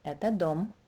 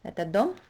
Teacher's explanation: So a statement would sound like this, это дом, and a question will sound like this, это дом. So you need to use a rising intonation on the word dom to show that that's a question.